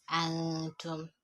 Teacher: I applied gunna because you have ta immediately after noun Saakinah. I know that noun, it has no vowel. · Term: ghunna of the noon